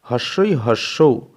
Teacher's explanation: জিহ্বার অগ্রভাগ উঁচুতে অবস্থান করছে, উঁচুর দিকে অবস্থান করছে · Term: উচ্চ